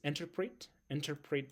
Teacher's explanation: the second syllable is stressed